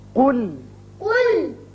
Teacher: قاف کو پر پڑھیے اور لام کو باریک۔ قل، قل، کیونکہ آپ نے ذرا بھی اگر قاف کو باریک کر دیا تو معنی بدل جائیں گے۔